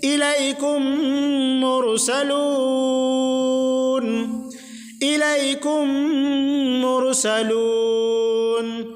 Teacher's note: میم ساکن کے فوراً بعد میم آ رہی ہے، اس لیے یہاں پر ادغام شفوی ہوگا · میم ساکن کے بعد اگر میم آ جائے تو اس کو غنہ کے ساتھ پڑھیں گے